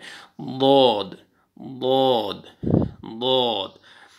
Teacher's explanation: दौद left side से जो पांच ऊपर वाली जो दाढ़ें हैं वहाँ पे आपने ज़बान की साइड आपने लगानी है